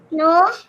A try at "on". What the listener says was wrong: No, it's not no. O-N? On.